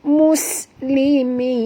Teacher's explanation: Muslimin. Mus bunyikan safir pada sin. Mus bunyi desir angin ya